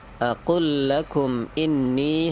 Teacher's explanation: itu inninya panjang, 6 harokat